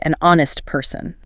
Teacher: So a word like honest starts with an H, but you say an honest person. Because the H is silent. The first sound your mouth makes is O, a vowel sound. So it needs N.